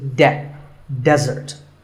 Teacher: here the stress is on the first syllable